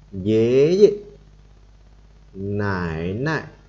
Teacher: Chữ nại hoặc là chữ dê là không có dấu thì chúng ta đọc nhẹ, đằng trước thì chúng ta đọc hơi nặng hoặc nhanh hơn một chút.